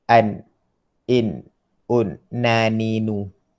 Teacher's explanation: Ujung lidah, ni ujung lidah. Kena langit-langit. Langit-langit depan, yang keras tu.